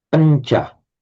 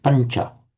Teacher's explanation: It's not panda, pancha. The n becomes slightly palatized because of the immediately following palatal ch sound